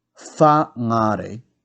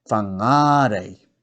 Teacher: So instead of whangare, it will be whangarei. So you put the emphasis on ngā because that's the first vowel with a macron.